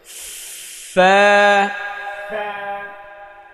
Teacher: সামনের উপরের দুই দাঁতের আগা নিচের ঠোঁটের পেটে লাগাতে হবে।